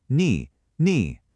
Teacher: That's the third tone. It has to dip down and come back up.